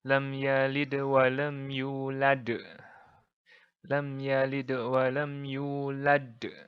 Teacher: pemantulnya lebih medok lebih tebal lebih besar dan cirinya adalah dia ditaruh di paling belakang ayat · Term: Qalqalah Kubro